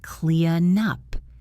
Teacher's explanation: I want you to link clean and up. The N sound should slide into the U sound.